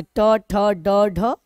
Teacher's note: ट बोलते समय जीभ जहां पर टक्कर करती है उस जगह को मूर्धा बोलते हैं